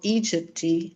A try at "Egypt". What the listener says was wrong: I think I heard you get a little bit of a Carioca pronunciation of Egypty. Adding a nice soft sound. No, but yeah, so it's Egypt. harsh consonant sound.